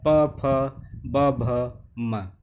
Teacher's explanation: त थ द ध न। ओष्ठ है प वर्ग, उच्चारण के समय होठों का स्पर्श। प फ ब भ म।